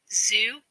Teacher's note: The z is a voiced fricative consonant.